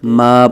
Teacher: ما کی ناک میں آواز ماں نہیں پڑھنا ، ماں نہیں پڑھیں گے بلکہ ما پڑھیں گے، من شر